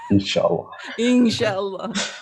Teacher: when inshallah nun sakina meets with shin, it is ikhfa